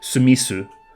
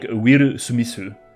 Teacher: In Japanese, there is not a th sound, so it gets replaced with an S sound · the th at the end of Smith becomes like an S sound as well